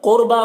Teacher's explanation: قاف کو پر پڑھنا ہے، را کو بھی پر پڑھنا ہے، با میں کھڑا زبر ہے، اسے ایک الف کے برابر کھینچ کر پڑھنا ہے۔